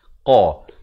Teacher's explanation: Qa makhrajnya di pangkal lidah.